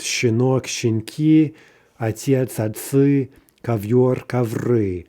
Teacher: in these particular nouns, the stress stays on that final syllable · The mobile vowel itself is squeezed out, but the stress does not jump. That is, it stays on that same syllable, right?